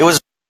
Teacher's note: there is a micro pause there, probably glottal stop, but again, T is reduced, and the schwa is very very weak.